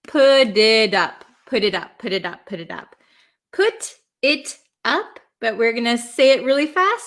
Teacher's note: when we have a T sandwiched between two vowels, a lot of the times in American English, it's going to turn into a flap T, which sounds like a D.